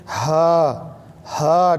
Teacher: ہا مربوطہ ہے. یہ ہا مربوطہ کو نیچے سے نکالا جاتا ہے، تھوڑی آواز اندر سے آتی ہے. ہا ہا ٹھنڈی آواز کے ساتھ.